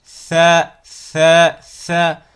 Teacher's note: Vous voyez ici la langue qui vient se positionner entre les dents du haut et du bas. Elle sort légèrement.